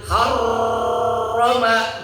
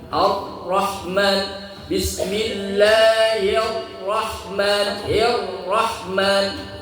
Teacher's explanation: Tidak juga Syiddah, juga tidak Rakhawah, tidak tertahan juga tidak mengalir. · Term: Bainiyah